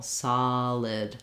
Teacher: the L starts the next syllable